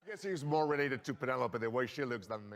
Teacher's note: Notice that he places emphasis on the word she.